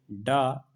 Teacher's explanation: सघोष है लेकिन अल्प प्राण है